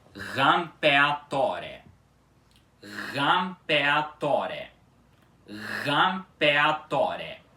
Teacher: Vocês podem perceber que essa palavra também começa com a letra ré, que é um R duplo, e ela fica com esse som forte de R, ok? Um R duplo bem sonoro no início